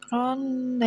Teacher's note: Ronda ini kan bacanya berdengung. Ini ada tanwin bertemu dengan dal. Nah ini namanya bacaan ikhfa hakiki.